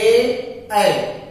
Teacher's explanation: ए बोलते समय कंठ के साथ साथ हमारी ताल भी चलती है, इसलिए इसको हम बोलेंगे कंठ तालव्य।